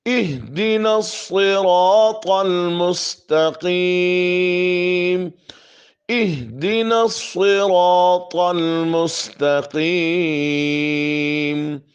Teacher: اہدی نہیں کہنا، بعض اکثر پڑھتے ہیں اہدی نہیں، ہاں کو ساکن کرنا ہے